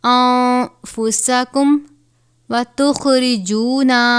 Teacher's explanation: خوا کو بھی پر پڑھا جاتا ہے کیونکہ یہ بھی حروف مستعلیہ میں شامل ہے